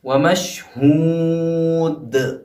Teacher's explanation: آخر کا جو دال ہے، کیونکہ لفظ کے آخر میں آیا ہے دال، اس لیے یہاں پہ جو ٹکراؤ ہوگا یعنی جو جنبش ہوگی وہ زیادہ ہوگی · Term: قلقلہ کبریٰ